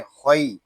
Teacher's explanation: खा या ज़बर खई, यहाँ या लीन हो रहा है, हम इसको खा को खींच कर नहीं पढ़ेंगे। इसको खई या खै इस तरह नहीं पढ़ेंगे, इसको पढ़ेंगे खई।